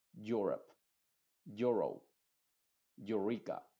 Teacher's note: veces se va a modificar ese sonido u y se va a convertir como en una u más cerrada · no es tan Clara esa u Pero sigue siendo una u cerrada